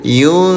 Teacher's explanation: Nun sukun bertemu dengan huruf shad. Ya, nama hukum tajwidnya ikhfa. Samarkan bunyi nun sukunnya selama 2 rakaat.